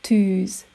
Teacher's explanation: And the long version, ü, like in the English word sit, but longer.